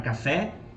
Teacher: a palavra café, o fé é forte, então é a última sílaba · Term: sílaba forte